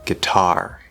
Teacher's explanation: the word guitar which is stressed on the second syllable